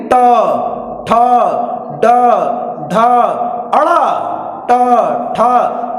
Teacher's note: ये मूर्धन्य ध्वनि जीभ का अग्र सिरा जाकर हमारे मूर्धा को टच करता है। मूर्धा मतलब तालू के पीछे जो गड्ढा वाला पोर्शन होता है वह मूर्धा बोला जाता है।